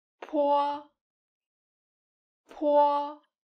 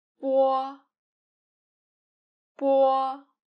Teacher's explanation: We can put a piece of paper in front of us to help us feel that po is aspirated. We pronounce po, the aspirated sound. The paper will move, whereas when you pronounce bo, the unaspirated sound, the paper won't move.